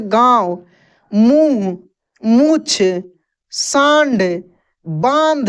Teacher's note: इसका उच्चारण, इसका ध्वनि नाक से निकलता है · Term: चंद्रबिंदु